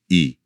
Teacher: तो महसूस करें कि आपकी जीभ का अगला हिस्सा ऊपर उठ रहा है। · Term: अग्र स्वर